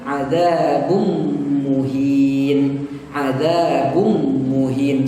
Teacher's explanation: jangan dibaca adzabun muhin, tapi dibaca adzabum muhin, langsung masuk ke mim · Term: idgham bi gunnah